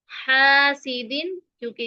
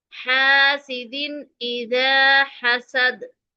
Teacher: दाल की तनवीन को, दो जेर की तनवीन को हम मुकम्मल तौर पर पढ़ेंगे, वाज़े करके पढ़ेंगे। हासिदिन, क्योंकि इसके फौरन बाद हमजा आ गया है।